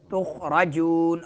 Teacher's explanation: جون میں کیا ہوگا؟ مدہ ہوگا اور نون میں غنہ نہیں ہوگا